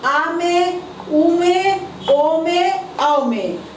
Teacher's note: इसको पश्च स्वर बोला जाता है क्योंकि इसमें जीभ का पिछला भाग ऊपर उठता है